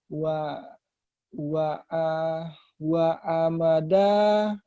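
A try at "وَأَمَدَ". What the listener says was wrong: Bukan ain ya.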